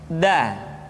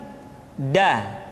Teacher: Da diucapkan dengan menyentuhkan ujung lidah kita dengan bagian gusi-gusi dua gigi seri bagian atas. Da. Nah, kesalahan yang sering dilakukan adalah menyentuhkan ujung lidah dengan langit-langit. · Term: huruf da